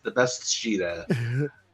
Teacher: you're going from an S sound into an SH sound, so it melds together